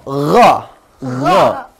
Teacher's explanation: Posisinya adalah di ujung tenggorokan di sini ya. Lidah ditarik untuk membentuk huruf O. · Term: huruf gin